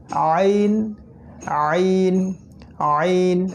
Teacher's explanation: অক্ষর উচ্চারণস্থলটা আগে বলে দিচ্ছি এটা হলো গলার একদম মাঝখান থেকে একদম কণ্ঠনালীর মধ্যভাগ থেকে আমাদেরকে এই হরফ দুইটাকে বের করার চেষ্টা করতে হবে